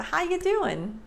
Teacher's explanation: the G is dropped notice my mouth didn't even move as much